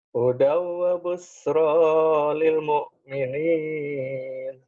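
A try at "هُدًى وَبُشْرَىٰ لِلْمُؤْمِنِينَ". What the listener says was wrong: Hutang shin ya. Huda wabush. Huda wabushra lil mu'minin. Tinggal shinnya.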